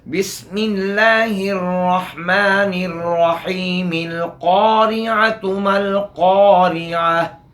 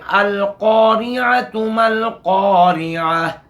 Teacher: अल की शुरू वाला ये हमज़ा वस्ली है, ये दर्ज कलाम में हज़्फ़ हो जाएगा, इब्तिदा में पढ़ा जाएगा